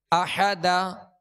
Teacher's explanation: دو زبر کی تنوین کو الف سے بدل کر وقف کریں گے